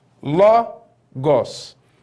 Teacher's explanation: Logos é a palavra. Olha onde está o acento. Logos, né? Está na penúltima sílaba.